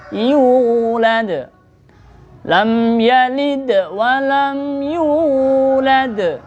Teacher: Mad tabi'i hurufnya ada 3, alif, waw, ya. Nah, di sini yu itu namanya waw, wawnya mad tabi'i. Jadi kita ayun, satu ayunan.